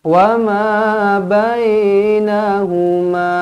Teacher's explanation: Mad jaiz munfasil 4 ataupun 5 kalau panjang, kalau berhenti jadi 2 sahaja. Wa ma bainahuma kalau berhenti.